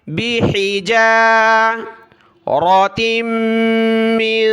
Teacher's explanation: تا کو میم کے ساتھ ملا، میم کو نون کے ساتھ، ناک میں آواز پیدا ہوگی